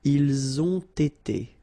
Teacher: you get first the liaison z, and then you've got the t